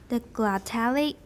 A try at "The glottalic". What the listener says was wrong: still don't hear your k very clearly. The glottalic. You're going up and down, but you can just stay flat and then go up at the end.